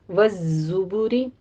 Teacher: بالبیناتی یا کی تشدید ادا کیجیے، نا میں فتح قائمہ ہے، 2 کاؤنٹ کرنا ہے۔ والزبری، زے کی آواز آپ نے سیٹی کی ادا کرنی ہے، قوی آواز کے ساتھ تشدید ادا کریں۔ والزبری، زے کے اوپر ضمہ بھی ہے، ہونٹ گول کر لیجیے۔